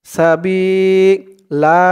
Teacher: দুই জবরে ওফ করলে এক জবর কে বাদ দিয়ে এক জবর দিয়ে এক আলিফ টান দিয়ে পড়তে হয়